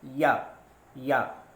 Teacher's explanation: तो अंदर से जो हवा निकलती है वो तालु में जाकर टकराती है, तो इस तरह से या का उच्चारण तालु से होता है, इसलिए या को तालब्य भी कहा जाता है।